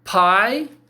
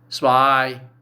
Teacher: I said pie, aspirated. Spy, no aspiration.